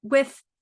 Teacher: when you do the th's we have the tongue out and the air flowing